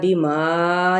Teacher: اسی طرح یہاں پہ بھی جھٹکا دیا جائے گا، یؤمنون، ٹھیک ہے، یؤمنو، نو پہ واو مدہ، بما، یہاں پہ دیکھیں مد نظر آ رہی ہے تو الف مدہ بھی ساتھ میں ہے اور اسے 4 حرکت ہم کھینچیں گے۔ انزلہ، نون پہ اخفاء حقیقی ہے، زا کی زیر اور لام کے حرکات کو لمبا نہیں کریں گے۔